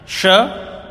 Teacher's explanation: इसको शंकर वाला स, सलगम वाला स ऐसा नहीं बोलना, इसकी आवाज तालु से निकलती है, इसलिए इसको तालव्य श कहते हैं।